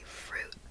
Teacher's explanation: my tongue is lower when I pronounce the U I say fruit in American accent